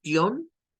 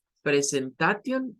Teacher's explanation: siempre esa terminación, la T no suena. La T nunca va a sonar.